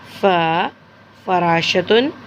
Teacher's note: इसका मखरज ऊपर के 2 दांतों के सिरे को नीचे के होंठ के तर हिस्से पर रख कर फ़ा अदा होता है।